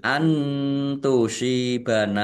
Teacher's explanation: Antusibana, nun sukun bertemu dengan huruf ta, bacaan ikhfa dibaca samar-samar.